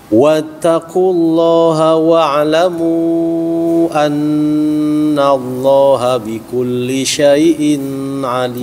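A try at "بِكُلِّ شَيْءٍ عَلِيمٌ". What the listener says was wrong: Nah, syai'in yang ditahan. Wattaqullah, ulangi.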